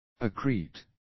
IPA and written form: æ'kri:t (accrete)